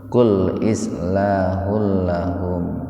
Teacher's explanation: dimasukkan ke lam tanpa mendengung